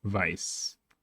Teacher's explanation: This is a sharp S. Sharp because it's unvoiced and can end abruptly and still sounds naturally.